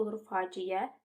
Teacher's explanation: Faciə i ə arasına y bitişdirici samit əlavə olunur.